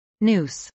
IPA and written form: nˈuːs (noose)